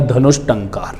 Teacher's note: इस उदाहरण के विसर्ग के जस्ट बाद में हमें ट वर्ण मिल रहा है, तो इस विसर्ग के स्थान पर हम षटकोण का श आधा, जो हमारा मूर्धन्य शकार कहा जाता है, वो करेंगे और पद बनेगा धनुष टंकार।